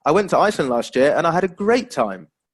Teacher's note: that first utterance you can see it's showing excitement isn't it so we'd expect to have that rising intonation